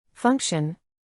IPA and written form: ˈfʌŋk.ʃən (Function)